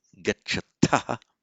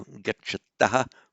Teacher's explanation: The endings for the dual we and dual you forms, the third person dual and second person dual, a bit different. So you two go, gacchata, with an aspirated T, and they two go, gacchataha, with an unaspirated T.